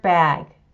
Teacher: the b affects the first two thirds the vowel affects the whole thing and the g sound affects the last two thirds these three sounds are being blended together and here we have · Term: co-articulation